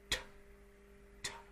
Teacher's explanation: put your tongue on your alveolar ridge and dam the sound there with pressure, and then just let it go.